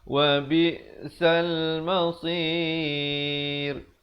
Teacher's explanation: Ra-nya itu dibacakan dengan nipis.